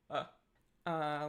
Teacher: The schwa is mid central, so it's just a really neutral vowel.